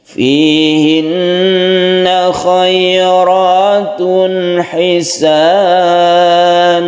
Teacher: Tanwin bertemu dengan ha izhar tidak berdengung, yang berdengung yang sini yang gunnah musyaddadah.